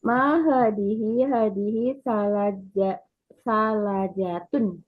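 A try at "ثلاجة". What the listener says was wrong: Ya salajatun lamnya panjang ya salajatun.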